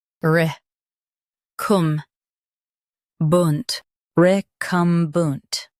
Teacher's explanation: Stress cum and keep bunt soft.